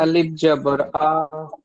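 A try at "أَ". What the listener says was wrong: মাশাআল্লাহ, আর একটু টান দিয়ে পড়বেন।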